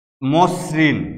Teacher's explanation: এস উচ্চারিত হচ্ছে, এস এইচ নয় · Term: স্বাভাবিক উচ্চারণ